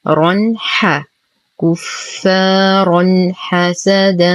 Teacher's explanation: نتم ضمة الكاف، نشد الفاء بعدها ألف ساكنة فهو الطبيعي بمقدار حركتين. رنح تنوين وبعده حرف الحاء الحكم إظهار حقيقي مع غنة ناقصة